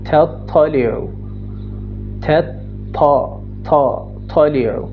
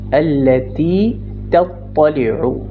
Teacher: طا واضح ہے، اونچا ہے، اس کے مخرج کو آپ لاک کریں گے